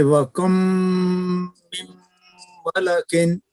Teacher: اس حالت میں اس کا حکم میم مشدد کا ہے، یعنی جب میم کے بعد میم آئے گا تو میم کو میم میں ملائیں گے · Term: ادغام مثلین